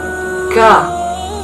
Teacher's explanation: Yang pertama adalah hames, yaitu nafas berhembus. Yang kedua adalah syiddah, yaitu suara tertahan. Yang ketiga adalah istifal, yaitu lidah di bawah. · Yang kedua adalah syiddah, yaitu suara tertahan. Yang ketiga adalah istifal, yaitu lidah di bawah. Yang keempat adalah infitah, yaitu terbuka antara lidah dan langit-langit atas.